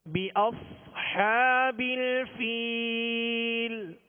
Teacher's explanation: بأص صاد ہے یہاں، صاد کو پر پڑھیں گے مگر سیٹی کی آواز بھی اس میں پیدا کریں گے